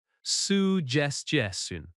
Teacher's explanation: Stress suggestion on the second syllable.